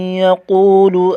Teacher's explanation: واو ساکن کا واو مدہ ہے، ایک الف کھینچ کر پڑھیں گے، قاف کو موٹا کریں گے